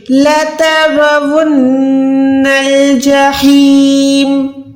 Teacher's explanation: ہا کو حلق کے درمیان سے ادا کر کے 1 سیکنڈ کھینچنا ہے